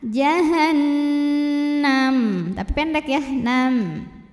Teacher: cara bacanya adalah dengungkan, bunyi n-nya tahan. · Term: gunnah musyaddadah